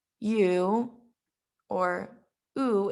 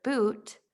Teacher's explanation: u or u in the word boot we can see that there is a back high tongue placement and this specific phoneme is rounded